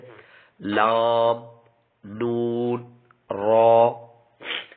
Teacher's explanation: اگلے حروف طرفیہ جو کہ زبان کا کنارہ اور دانتوں کی جڑ کے تالو کی جانب والے حصے سے ادا ہوتے ہیں